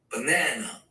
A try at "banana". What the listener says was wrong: Yeah, be careful. It's not ah. It's no, it's not. The vocal cords are completely relaxed. And what you're hearing is the diaphragm. The diaphragm is like a drum. You can only hear it if the vocal cords are completely relaxed. This is not customary for Japanese speakers.